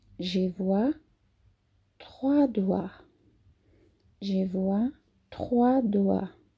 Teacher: Lembrando que as últimas consoantes não são pronunciadas. E o oi da gente tem som de UA.